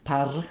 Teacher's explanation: that R, if you're from India, wants to roll and be forward like par, and then it's really hard to do the flap.